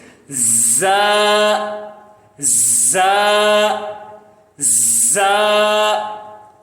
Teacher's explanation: اس کا مخرج یہ ہے کہ زبان کی جو نوک ہے نیچے کے دانتوں کی پشت اور تھوڑے سے کناروں کو لگے